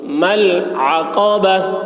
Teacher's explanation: قاف کی آواز موٹی ہوگی